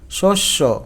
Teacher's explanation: পদের মধ্যে বা অন্তবর্ণে জফলা যুক্ত হলে তার উচ্চারণ ওকারান্ত হয়। অর্থাৎ পদের মধ্যে অথবা কখনো শেষে জফলা থাকলে এইযে নটা ওকারের মত হয়ে যায়।